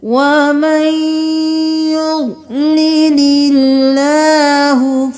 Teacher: يُضْلِلِ اللَّهُ نہیں کریں گے، اللہ کا لفظ باریک پڑھیں گے کیونکہ اس سے پہلے والے حرف پر زیر ہے